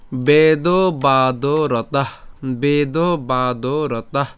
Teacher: এখানে তাহ কেন উচ্চারণ করলাম? এখানে বিসর্গ আছে, আমরা উষ্ম ছাড়লাম